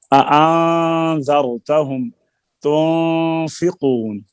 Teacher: نہ تو اظہار ہو اور نہ ادغام، بلکہ ان دونوں کی درمیانی کیفیت ہو، اس کو اخفاء حقیقی کہتے ہیں، اور میم کے اخفاء کو اخفاء شفوی کہتے ہیں، جو آگے آئے گا۔